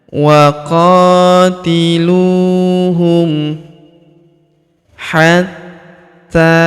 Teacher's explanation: huruf ta kita tahan dan kita tekan karena terdapat tanda tasydid di atasnya. Hatta, lalu kita panjangkan 2 harokat karena alif kecil di atasnya.